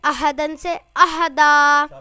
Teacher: دو زبر پر وقف کرنا ہو تو الف مدہ سے بدل دیتے ہیں